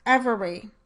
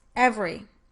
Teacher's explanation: I might say it as 3 syllables, every. But when I say it more quickly, I'm more likely to say it as 2 syllables, every. In that case, we might say that the underlying form of the word has 3 syllables, but that its surface form may only have 2 syllables.